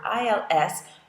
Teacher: if you just have that word ILS you don't pronounce the S on the end of the word